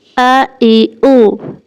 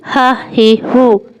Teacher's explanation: گلا بھی زور سے نہیں دبانا۔ یاد رکھیں حمزہ آواز اور سانس کا بریک ہے، جبکہ ہا صرف سانس ہے، آواز کے ساتھ گرم سانس ہے۔